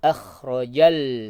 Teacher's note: Kha-nya tetap sama, kha yang tenggorokan bagian atas. Akhrajal, lam sukunnya jangan cepat-cepat pindah.